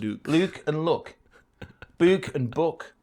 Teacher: are typically pronounced with a goose vowel rather than that of foot